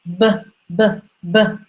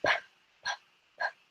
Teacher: The difference is B is a voiced sound and P is unvoiced sound.